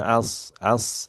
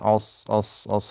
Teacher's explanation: a nya harus a tapi jangan sampai terbawa dia tebal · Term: huruf tipis